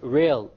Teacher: The English R comes from the middle of the tongue. Whereas the Arabic rah comes from the tip of the tongue along with the incissors or the gum behind the incissors.